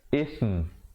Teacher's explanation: Last sekali tutup mulut rapat dan bawa bunyinya itu ke khayshum, melahirkan tempat keluar huruf mim.